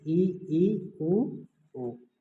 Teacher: जिन स्वरों का उच्चारण करने पर जो मुख का भाग है जो सबसे कम खुलता है तो वे समृद्ध स्वर कहलाते हैं